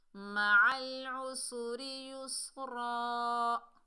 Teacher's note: عین کو حلق کے درمیان سے ادا کریں گے، سین کو سختی اور سیٹی سے پڑھیں گے، زیر کی وجہ سے را کو باریک پڑھیں گے۔